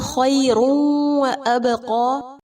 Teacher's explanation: یا لین ہوگا اور تنوین کے بعد واو ہے ادغام باغنہ ہوگا اور با پر قلقلہ کریں گے